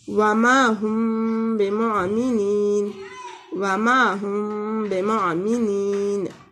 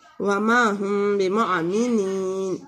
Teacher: یعنی توڑے سے غنے کے ساتھ میم کو اخفاء کریں گے، چھپائیں گے۔ وما ہم بمعمنین، یعنی میم جو ہے اس میں سے جلدی سے گزر کے با کی حرف پر آ جائیں گے اور غنہ کے ساتھ یہاں پہ اخفاء کریں گے، وما ہم بمعمنین۔ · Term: اخفاء شفائی